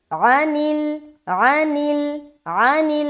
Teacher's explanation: عین کو ظاہر کریں گے حلق سے.